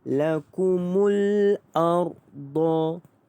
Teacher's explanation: ra ini dibaca dengan tebal kerana sebelumnya berbaris di atas dan ra itu dimatikan